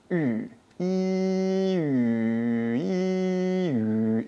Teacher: So when you're practicing to say what you do is you say E, your tongue is in the far front of your mouth, and what you need to do is keep your tongue in the same spot. So, E, and then all you're going to do is take your lips and round them. So, pucker.